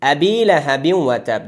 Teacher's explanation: در کلمه ابی همزه قطعی هست، در هر دو حالت خوانده میشه، هم در حالت وقف و هم در حالت وصل. در ابی یا ساکن ما قبلش کسره 2 حرکت مد اصلی میشه